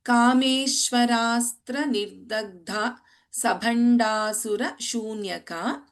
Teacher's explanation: in dagdha dha is mahaprana sabhandasura bha is mahaprana